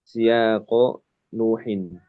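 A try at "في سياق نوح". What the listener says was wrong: Nuhin itu baris yang bawah, Pak. Masih yang atas.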